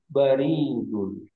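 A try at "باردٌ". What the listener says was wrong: Baridun. Baknya panjang, Pak. Baridun. Dengan catatan baknya panjang. Kalorinya panjang, beda lagi maknanya. Berubah.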